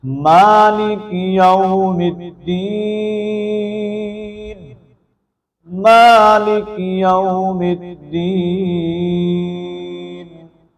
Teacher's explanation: مالکی میم کے اوپر کھڑی زبر ہونے کی وجہ سے اس کو ہم ایک الف کے مطابق لمبا کریں گے، اور اس طرح واو ساکن ما قبل زبر ہے تو یہاں پر واو کو لمبا نہیں کیا جائے گا کیونکہ یہاں پر واو لین ہے، اس کو جلدی سے ادا کرنا ہے، اور دین کے اندر لفظ یا ہے اور یا ساکن سے پہلے زیر ہے تو یا مدہ ہونے کی وجہ سے یا کو بھی ایک الف کے مطابق ہم لمبا کریں گے۔